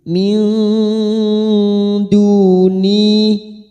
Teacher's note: Kita samarkan bunyi nun sukun 3 harokat min, siap masuk ke huruf dal, maka bibir kita siap-siap pada makhraj huruf dal. Min duni masing-masing 2 harokat, duma bertemu wawu sukun, ni kasar bertemu ya sukun, masing-masing 2 harokat kita panjangkan. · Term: ikhfa hakiki